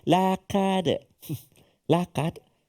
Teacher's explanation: Huruf qaf supaya dia tak bunyi tipis macam kaf.